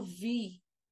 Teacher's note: Quando eu falo temo, eu percebo que a minha língua está muito mais próxima do céu da boca, do palato, do que dos dentes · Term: anteriores ou palatais